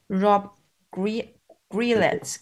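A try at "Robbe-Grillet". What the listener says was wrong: You don't pronounce the T.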